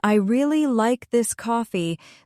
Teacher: For example, in I really like this coffee, the stress is on really.